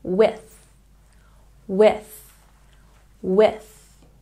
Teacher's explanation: With has a TH, so don't forget to stick your tongue between your teeth.